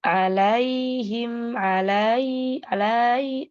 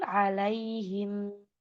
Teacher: ya sukun sebelumnya fathah maka disempurnakan harfulinnya tapi juga tidak boleh dipanjangkan